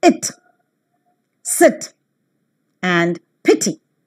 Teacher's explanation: The lips are loosely spread when the sound is pronounced, and hence the three-term label for the description of E as in sit is front, unrounded vowel just above the half close position · front between close and half close unrounded short vowel